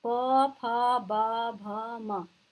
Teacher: होठ जो है आपके चिपकते हैं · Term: ओष्ठ